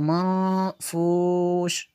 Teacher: नून साकिन के बाद फा हुरूफ़ इख्फा में से है इसलिए यहाँ पे इख्फा होगा। तो इसको मनफूश ऐसे करेंगे, ऐसे पढ़ेंगे।